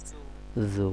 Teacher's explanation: নরম হবে, জিব্বার আগা, দাঁতের আগার সাথে জাল লাগবে